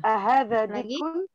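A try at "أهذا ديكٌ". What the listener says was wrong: Diknya panjang ya? Di. dikun.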